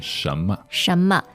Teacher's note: So neutral tone is sort of the 5th tone. It's very light, swift. And kind of incognito because it doesn't have a tone mark.